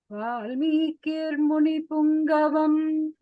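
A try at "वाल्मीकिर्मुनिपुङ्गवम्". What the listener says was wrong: Uttama.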